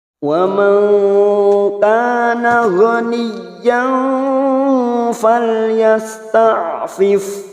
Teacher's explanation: nun sukun bertemu kaf, ikhfa hakiki kita samarkan bunyi nun sukun 3 harakat. Wa man kana kaf fathah diikuti alif 2 harakat.